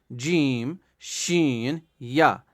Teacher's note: جیم شین یا. زبان کا درمیان اور تالو کے ملنے سے ادا ہوتی ہے. یعنی زبان کا درمیان جو زبان کا بیچ والا حصہ ہے اور اوپر والا جو تالو ہے، تالو جس کو ہم بولتے ہیں، ان کو ملانے سے جیم شین اور یا نکلتے ہیں.